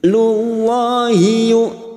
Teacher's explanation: lam jalalah yang sebelumnya dumma kita baca tafkim